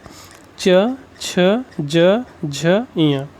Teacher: T for तालु। तालु चा वर्ग जो होता है तालु से बोला जाता है